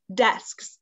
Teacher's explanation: the sound that's hard in this word is that SKS sound, which is the S and the K sound put together. So you do sk, sk, sk.